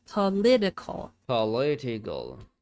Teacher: The vowel in the first syllable is unstressed and in the unstressed reduced to a schwa.